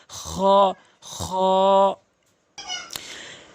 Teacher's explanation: খটি হলকের শেষ থেকে খ, এভাবে সাউন্ড করে উচ্চারণ করবেন